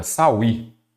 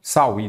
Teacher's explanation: Que eu tenho uma palavra oxítona, não é isso? A sílaba tônica é a última.